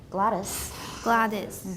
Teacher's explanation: I don't say is. I use a schwa there.